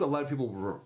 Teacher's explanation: A lot of becomes a lotta.